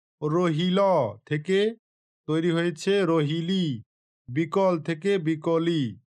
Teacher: শব্দের শেষে থাকা আ ধ্বনিটি আগের হস্রৈকারের প্রভাবে হস্রৈ কারে রূপান্তরিত হয়েছে, অর্থাৎ স্বরগুলো একে অপরের সঙ্গে সঙ্গতি রক্ষা করছে। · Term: স্বরসঙ্গতি